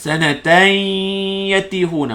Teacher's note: Kalau sambung tanwin bertemu ya jadi idgham ma'al ghunnah. Sanatan yatihuna, panjangkan dengung.